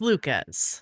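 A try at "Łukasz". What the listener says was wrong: I'm not the authority on Polish pronunciation, but I believe the S and the Z are sh. So I believe it's Lukasz.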